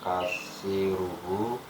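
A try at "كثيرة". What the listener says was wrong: kasiratun ada T-nya itu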